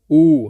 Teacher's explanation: भाषा विज्ञान की दृष्टि से छोटा ऊ तथा बड़ा ऊ पश्च संवृत्त स्वर हैं